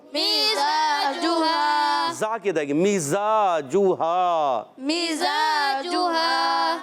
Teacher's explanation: زبان کی بالکل باریک نوک اور اوپر نیچے دونوں دانتوں کے اندرونی کنارے یعنی ثنائے سفلا ما اتصال ثنائے علیہ ہوتے ہیں، تو یہ زا سین صاد کا مخرج ہوتا ہے.